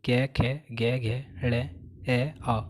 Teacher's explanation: कंठ और निचली जीभ के स्पर्श से बोले जाने वाले वर्ण कंठीय वर्ण कहलाते हैं